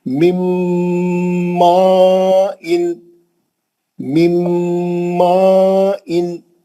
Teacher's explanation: یہ نون کو لے کے میم میں گھس جائیں گے تو نون غائب ہو جائے گا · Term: میم کا غنہ